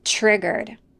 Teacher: And the T plus R in the word triggered make a ch sound. Not triggered, but triggered.